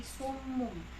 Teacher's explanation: Summun, kan ini summun bertemu dengan ba, jadi dia berubah bunyi jadi mim. Summum, jadi summum. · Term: iqlab